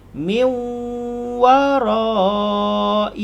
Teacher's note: Jadi dengung dia ketika miu. Dua harakat.